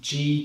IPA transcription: g